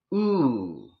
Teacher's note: The vowel /u:/ is high too, but in the back.